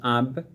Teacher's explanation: বা উচ্চারিত হয় নিচের ঠুটের ভিতরের অংশ থেকে